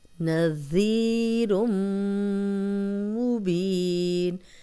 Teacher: ذی یا مدہ ہے جزم الیا زال پہ زیر زال کو نرم رکھیں گے سیٹی کی آواز نہیں آئے گی. 2 حرکات لمبا کریں گے.